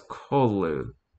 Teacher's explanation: The first syllable of that is pronounced gutturally and very thickly, and the U is about like that in full.